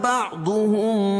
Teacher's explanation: میم ساکن کے بعد با ہے، تو یہاں اخفاء شفوی ہوگا